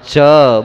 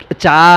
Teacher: ह्रस्व अक्षर भी अपने आप में पूर्ण वर्ण है, उसका उच्चारण पूर्णता के साथ च बोलिए, चा नहीं।